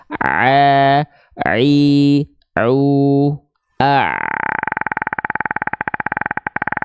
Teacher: kita sudah tahu huruf Ain ini dilafalkan dari bagian tengah tenggorokan kita di sini setelah Tengah tenggorokannya dia berkontraksi ya pastikan jalur suaranya · Selanjutnya, kalau ain kita pengen lebih tepat, teman-teman sekalian, ya, perhatikan tadi kita sudah tahu huruf ain ini dilafalkan dari bagian tengah tenggorokan kita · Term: bunyi ain